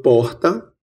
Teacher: Aqui no interior da Paraíba, como em boa parte do interior do Nordeste, temos a pronúncia de uma fricativa aspirada R.